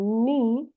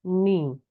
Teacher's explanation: kalau ni ya lidahnya itu lebih ke arah depan gitu ya. Jadi posisi uh, artikulator itu tidak sama ya karena dia menyesuaikan dengan bunyi yang akan mengikutinya ya.